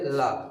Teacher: जब हम ला बोलते हैं तो हमारे इधर इस साइड से दोनों तरफ से हवा निकलती है और जो जीभ है वो जाके तालू में टकरा जाती है। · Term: पार्श्विक व्यंजन